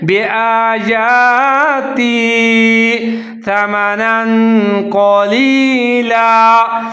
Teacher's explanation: تو تا اور جا ملا کے پڑھیں گے بیاتی ثمنا قلیلا، سا کو ظاہر کر کے پڑھنا ہے، اس کو سین نہیں پڑھنا، سا پڑھنا ہے ۔ اور سا کے اوپر زبر ہے، میم کے اوپر زبر